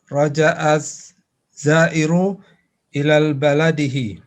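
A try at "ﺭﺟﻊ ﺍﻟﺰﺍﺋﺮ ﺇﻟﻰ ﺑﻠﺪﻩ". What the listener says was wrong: Ila baladihi, tidak ada alif lam.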